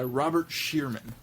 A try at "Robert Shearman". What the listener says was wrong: Sherman. It's spelled Shearman, but I think it's pronounced Sherman.